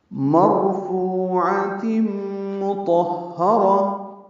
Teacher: مرفوعۃ مطہرہ، مرفوع میں را پر ہے، فو واو مدہ عین وسط حلق سے ادا کریں گے